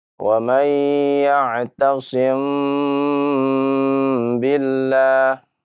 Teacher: dibaca ya maka bacalah dengan samar ya wamay yaasim Billah ya mim dan ba huruf yang sama makhrajnya dari kedua bibir · dimaksud ya dengan Ikhfa Syafawi mim sukun bertemu dengan huruf ba mim sukun bertemu dengan huruf ba ketika dibaca ya maka bacalah dengan samar